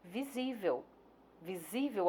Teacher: que a sílaba tônica é a penúltima é a palavra visível visível a sílaba tônica é a penúltima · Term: paroxítona